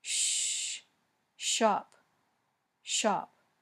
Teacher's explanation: the sh sound is voiceless your vocal cords are not vibrating